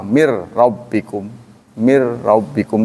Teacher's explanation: karena Nun bertemu dengan ro itu nama idgham bila ghunah Jadi tidak boleh lama